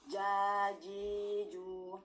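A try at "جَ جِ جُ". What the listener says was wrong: Hati-hati, Kasro.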